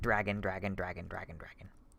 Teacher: it's the fact that d is trying to transform into r that there's like a transition point through a j sound